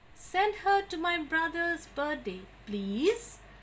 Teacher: So that's a request and you need to tell in a rising tone.